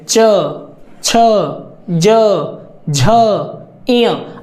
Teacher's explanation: आपका जो जीभ का अग्र भाग है वो आपके ऊपर वाले दांत के जस्ट पीछे का स्थान जो तालू का स्थान होता है वहां पर टच करेगा और हटेगा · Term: च वर्ग